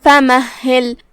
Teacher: ہا کی ادائیگی حلق کے نیچے والے حصے سے ہے جو کہ اس پہ تشدید ہے, تو 2 حرف کے برابر ہم ہا کو پڑھیں گے. آخری میں لام کے نیچے زیر ہے, لہذا لام کو زیر سے ادا کرنا ہے. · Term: حرف الہا